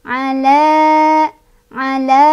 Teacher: karena ada fathah berdiri di atas huruf lam, jadi cara bacanya dipanjangkan dua harokat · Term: mad tobi'i